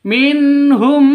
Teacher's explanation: Mim mati bertemu dengan mim, bacanya idgham mimi, masuk ke mim yang kedua, terus didengungkan.